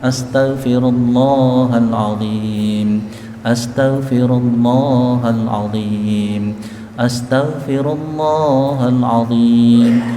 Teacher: jangan lupa lafal Allahnya panjangkan.